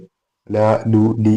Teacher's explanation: നമ്മളൊന്ന് പറഞ്ഞു നോക്കിയാൽ അത് മനസ്സിലാവും. നാവിന്റെ ഫ്രണ്ട് പോർഷൻ മേലെ പല്ലിന്റെ അടിഭാഗത്തേക്ക് തട്ടുമ്പോൾ ല. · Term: ലാമ്